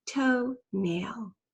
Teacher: making the O sound and then nail that long a sound the L is a little controlling too so you can hear that it's changed the long a sound slightly